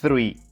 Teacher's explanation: The key is the TH sound. You must take your tongue between your teeth and let the air flow.